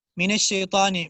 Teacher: من میں دیکھیں میم اور نون وہ موٹے حروف میں ہے نہیں ہے، تو میم اور نون یہ بھی باریک ہے. من الشی، شین بھی باریک ہے، موٹا حرف نہیں ہے.